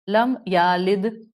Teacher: اس کو یم یلد کو پڑھ لیا, لم یالد, آپ نے یا لد کر دیا, تو آپ نے اس یا کی حرکت کو بڑھا دیا